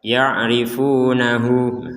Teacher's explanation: Jadi untuk huruf H ini ya harokatnya dhammah, kemudian di bawahnya ada waw kecil, maka harokat dhammahnya kita panjangkan 2 harokat dengan adanya waw kecil ini.